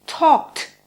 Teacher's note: For example, if you need to say talked, your last letter is a K. If you try to pronounce a D after the K without making any vowel sound, you'll get a T. Talk, in the past tense, sounds talked.